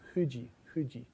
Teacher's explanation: So in English, we have a labod dental F with our our lower lip against our teeth. In Japanese F, your teeth are not involved. It is only your lips. · If you learn Japanese, you must learn to pronounce the F bilabially rather than labiodentally. So in English, we have a labiodental F with our lower lip against our teeth. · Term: bilabial fricative